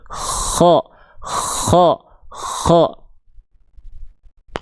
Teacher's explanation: Ngalir. Kalau huruf kha dia ada nafas keluar, makanya ada kresek-kreseknya.